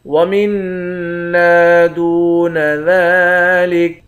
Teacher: میم کو نون مشدد کے ساتھ ملا کر نون پر غنہ کریں گے، ایک الف کی مقدار کھینچ کر بھی پڑھیں گے